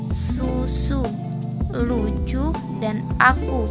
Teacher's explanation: U tidak kapital adalah vokal yang diucapkan dengan mulut membundar dan lidah diangkat setinggi mungkin mendekati langit-langit